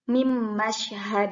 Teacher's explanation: ketika bertemu dengan huruf mim begitupun sama ya mimma sya jadi Nun nya tidak terbaca dimasukkan langsung ke huruf selanjutnya